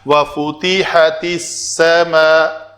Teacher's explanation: اس لام کا سین کے اندر ادغام ہو گیا حروف شمسی کی وجہ سے